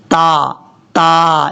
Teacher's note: ہے، 2 نقطوں والا تا جو ہمیشہ بریک پڑھا جاتا ہے، اس کا مخرج ہے زبان کی نوک اوپر والے جو 2 دانت ہیں ان کی جڑوں سے لگے تو تا پڑھا جاتا ہے